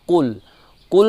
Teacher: قل میں جو ہے قوف موٹا پڑھیں گے لیکن لام کو باریک پڑھیں گے. کل نہیں پڑھیں گے بلکہ قل، قوف کو موٹا پڑھیں گے چونکہ قوف جو ہے حرف استعالہ ہے.